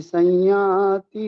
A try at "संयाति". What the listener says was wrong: यहाँ पर थोड़ा करेक्शन, संयाति नहीं है, सम्याति।